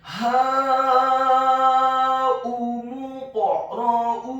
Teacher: huruf qaf yang sukun pengucapannya wajib untuk diqalqalakan atau dipantulkan · Kemudian huruf alif atau hamzahnya dibaca tipis, dhammah 1 harokat. Kemudian huruf mimnya dibaca dhammah cukup 1 harokat saja, karena setelahnya langsung disambung ke huruf qaf yang tafkhim yang tebal dan dibaca sukun dan wajib untuk diqalqalakan atau dipantulkan.